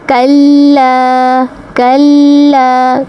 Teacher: کاف کو باریکی سے ادا کریں گے، لام کی آواز کو کھینچیں گے